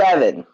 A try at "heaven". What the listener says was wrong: A little more guttural from the back of the throat.